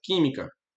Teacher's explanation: química é uma palavra proparoxítona, por quê? Porque a sílaba forte é a antepenúltima